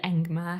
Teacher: the word engma has a velar nasal in it